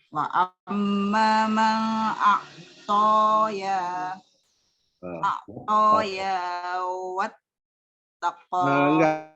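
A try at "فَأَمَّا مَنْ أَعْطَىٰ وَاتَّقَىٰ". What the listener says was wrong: Enggak. Ini bukan ya yang difatahkan, tetapi ini adalah alif. Jadi wa amma man a'ta wattaqa gitu.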